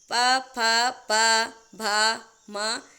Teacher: इन सभी का उच्चारण स्थान आपका ओष्ठ है क्योंकि इनके उच्चारण में आप देखेंगे दोनों होठ आपस में मिल रहे हैं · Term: ओष्ठ वर्ण